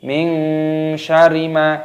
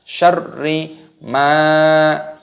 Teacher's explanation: Perhatikan roknya terdapat tasdid, maka diidghamkan, dimasukkan, ditekan. Min syarri, tidak boleh min syarima, tidak boleh, harus ditekan.